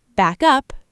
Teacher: Backup, noun, stress on back, equals a copy, reinforcements.